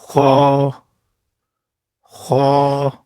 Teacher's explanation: خا یعنی گلے کے اوپر سے گلی ہوئی آواز